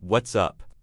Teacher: often has a rising intonation on the word up when you are genuinely asking